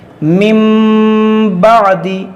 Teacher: جب ہم قاعدہ پڑھ رہے تھے تب ہم نے آپ کو بتایا تھا کہ نون ساکن یا تنوین کے بعد حرف با آ جائے, اس نون ساکن اور تنوین کو میم سے بدل کر اخفا کریں گے, گنہ کریں گے. مم بعد, اس طرح پڑھیں گے. · نون ساکن کے بعد با ہے تو یہاں پر اقلاب ہوگا